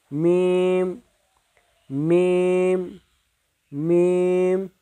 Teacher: দুই ঠোঁটের মিলন জায়গা হইতে উচ্চারিত হইবে